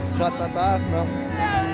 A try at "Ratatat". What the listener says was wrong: So, people, they have to say the last T. Ratatat?